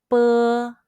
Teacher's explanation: pronunciation is it's like the p in the english word spa the chinese b sound is voiceless it's different from the b in the english word by which is voiced